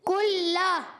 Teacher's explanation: कुल्ला में काफ को बारीक रखना है। जबान की जड़ और तालु के सख्त हिस्से से काफ अदा होता है। · लाम अदा होता है। जबान का किनारा और दहिक से सनाए तक के मसूड़े। ये लाम का मकज है। · کلّا میں کاف کو باریک رکھنا ہے، زبان کی جڑ اور تعلق کے سخت حصے سے کاف ادا ہوتا ہے، لام مشدد ذرا رک کر ادا کریں